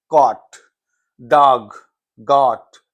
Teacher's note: तब इन वर्ड्स को American English में प्रोनाउंस करने के लिए कौन सा वॉवेल यूज होगा, देखिए वॉवेल आ यूज होता है, that is a long vowel आ